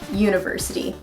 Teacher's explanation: it doesn't start with a vowel sound it starts with a consonant sound being Y